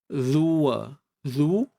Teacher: pangkal lidah attidu waliya attidu attakidu attid u dapat huruf Zal keluar sedikit hujung lidah dan ditekan pada gigi sebelah atas